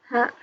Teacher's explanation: Di sini H-nya H besar ya, bukan H kecil. Yang mana makharijul hurufnya itu dari tenggorokan bagian bawah. Seperti huruf H, terasa ada aliran nafas.